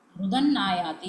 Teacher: अत्र नकारस्य आगमः भवति, अतः नकारः द्विवारं श्रूयते.